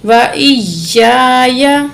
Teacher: یا کو سختی سے پڑھیں گے، اوپر تشدید ہے ، حمزہ زیر یا، ای، یا الف زبر یا زبر یا،